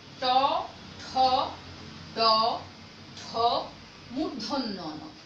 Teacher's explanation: জিহ্বাটা একটু চ্যাপ্টা করে নিয়ে ওপরের যে শক্ত অংশটা আছে, সে শক্ত অংশটাকে জিহ্বার অগ্রভাগ স্পর্শ করে। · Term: মূর্ধা বর্ণ